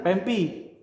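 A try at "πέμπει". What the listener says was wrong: Mi dengan p bacanya b.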